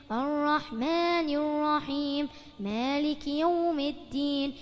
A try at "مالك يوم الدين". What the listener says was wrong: الدين حبيبي مو التين. لا، التين هداك بتاكله بعدين.